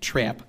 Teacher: the raised short a raises the vowel in words like trap to something like trap